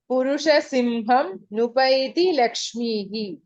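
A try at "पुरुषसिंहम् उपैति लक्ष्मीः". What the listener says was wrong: If you split it there, Purushasimham, then it becomes Upaiti. So, Lakshmihi Udyoginam Purushasimham Upaiti, not Mupaiti. If you say Simham, you should say Upaiti.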